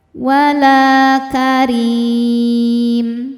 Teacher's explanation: La baridin wala la hukumnya mad thobi'i zohiri. Sebab ada alif didahului harakat fathah. Cara bacanya panjang dua harakat.